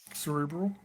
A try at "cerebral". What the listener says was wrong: He forgot the R. The second cerebral. You said cerebral.